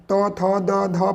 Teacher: त का प्रयोग करिएगा तो त में दंत का प्रयोग होता है। त, थ, द, ध पढ़िएगा ना तो सब में दांत टच होता है जीभ से